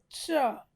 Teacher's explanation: फिर ये इसको बोलते हैं मूर्धन्य सा, क्योंकि इसको बोलते समय जीभ हमारे मुंह के मूर्धा अंग से स्पर्श होता है